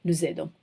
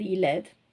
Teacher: So you see the S, you're pushing the S on top of the next vowel, the vowel on the next word, nous. So you're supposed to be giving the sound z, nous aidons.